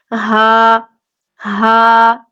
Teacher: یہ حلق کے نیچے والے حصے سے ادا ہوگا جو سینے کی طرف ہے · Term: دو چشمی ہا